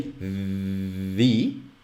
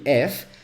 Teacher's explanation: now maybe a better example would be between v and f if you say v you can feel your vocal chords vibrating but if you say f nothing your vocal chords are not moving